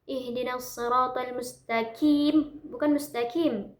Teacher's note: Dia bukan kaf akan tetapi dia qof ya dia tebal bukan tipis.